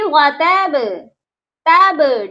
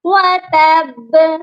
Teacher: تب ڈھیلا والا قلقلہ نہیں کرنا، اس پر سختی سے قلقلہ کرنا ہے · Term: سختی والا قلقلہ